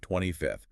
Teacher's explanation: It requires that breathy th sound at the end, placing the tongue slightly between the teeth.